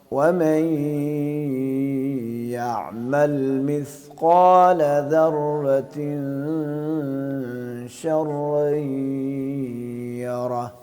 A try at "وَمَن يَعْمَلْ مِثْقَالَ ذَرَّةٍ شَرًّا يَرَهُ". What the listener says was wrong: را رہ گئی بس آپ کی، را رہ گئی، را. پہلی را آپ ٹھیک پڑھتے ہیں، دوسری کیوں ٹھیک نہیں پڑھتے؟